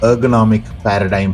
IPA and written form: ˌɜːrɡəˈnɒmɪk ˈpærədaɪm (ergonomic paradigm)